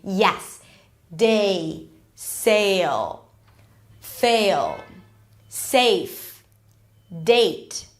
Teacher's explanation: you're kind like squeezing two vowels together · imagine as if you're adding a y sound like in yes · So you start with an E, and then actually the tongue is going towards the I sound, A, right? So you have to reach that I part. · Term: long a sound, long A sound